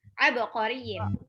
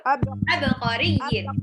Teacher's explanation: Qafnya cuma satu harokat.